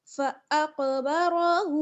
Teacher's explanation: फ़अक़बरा, फ़अक़बरा, हा उल्टा पेश हू, उल्टा पेश है इस वजह से खींच कर पढ़ेंगे